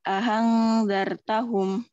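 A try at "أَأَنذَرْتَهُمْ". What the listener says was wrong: Terlalu hak neng itu. Dengan kayak gitu.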